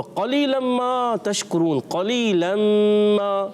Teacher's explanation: قاف موٹا رکھنا ہے اور ادغام کا غنہ بھی اچھے انداز سے کرنا ہے